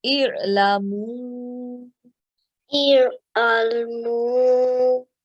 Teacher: Waw Sakin has Maddis Saghir over it. We prolong it for 3 to 5 seconds.